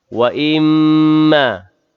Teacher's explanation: mim yang bertasydid, wajibul gunnah, wajib dengung sekadar 2 harakat